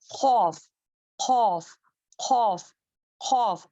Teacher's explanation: اکثر لسان یعنی کہ ہماری زبان جو ہے اوپر تالو کی طرف ٹچ کرنے سے، نرم تالو کو ٹچ کرنے سے خوف کا مخرج ادا ہوتا ہے. اس کو موٹا پڑھیں گے، اس کو کاف کی طرح نہیں پڑھیں گے.